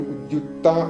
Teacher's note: ക് സൈലന്റ് ആയി ത മാത്രമേ പുറത്തേക്ക് കേൾക്കുള്ളൂ